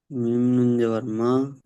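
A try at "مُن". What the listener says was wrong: জাবার নয়, পেশ আছে, মিম নুন পেশ মুন।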